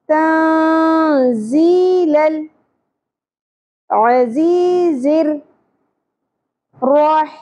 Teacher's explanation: نون ساکن کے بعد حروف اخفا میں سے ز آ گیا، اخفا مع الغنہ ہوگا. نون کی آواز کو ہم چھپائیں گے اور غنہ بھی کریں گے. ٹھیک ہے، تن نہیں پڑھنا.